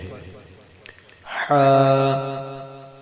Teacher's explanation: حا کو حلق کے درمیان سے ادا کرتے ہیں تاکہ حا اور ہا میں فرق رہے